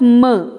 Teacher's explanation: of complete oral closure for example in the production of my the lips are in firm contact and blocking the oral passage and the soft palate is lowered and opening the nasal passage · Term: nasals